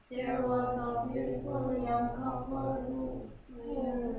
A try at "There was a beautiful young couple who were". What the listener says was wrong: were. Where가 아니고 were.